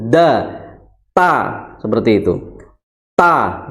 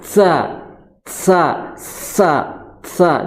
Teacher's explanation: Nah, maka punggung di ujung lidahnya ditempelkan di situ, da, ta, seperti itu, ta, ya. Jangan digesekkan kalau mengucapkan ta, jangan sa, jangan seperti itu, tapi apa? Tempelkan saja ta seperti itu secara sempurna.